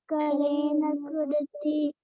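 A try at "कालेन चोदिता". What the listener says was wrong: Kalena chodita. Kalena chodita. So, CO is pronounced so.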